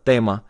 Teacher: It's a really soft T. It's an unaspirated T. No breath really comes out of your mouth when you say tema.